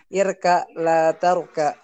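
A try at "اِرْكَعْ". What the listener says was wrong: Ro-nya duluan. Ro bukan kaf yang duluan tapi ro.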